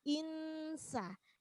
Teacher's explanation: di situ nun sukun ketemu sin namanya ikhfa. Ya, ikhfa itu samar.